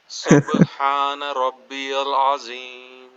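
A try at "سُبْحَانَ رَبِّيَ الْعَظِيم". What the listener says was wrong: عظیم میں نا روئے پہ آپ کا جو ہے وہ وائبریشن فیل ہو رہی ہے. عظیم، روئے کو ذرا نرمی سے پڑھیں. سبحان ربی العظیم. را پہ آپ کو تھوڑی سی مشکل پیش آ رہی ہے.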